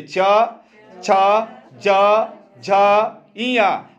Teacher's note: बोल के देखिए च, छ, ज, झ, इया। आपका जीभ देखिए तालू में जा रहा है